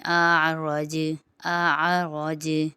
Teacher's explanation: یہاں پر حمزہ کی آواز الگ اور عین کی آواز الگ آئے گی۔ پہلے حمزہ کی باریک آواز اور پھر عین کی آواز ادا ہوگی۔